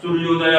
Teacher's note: जैसे सूर्य, यह है लास्ट में, तो यह में क्या है, अ है, आ जोड़ उ है, अ उ मिलकर क्या हो गया, ओ हो गया